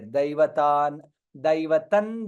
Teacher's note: since anuswara is followed by dakara, nakara comes there.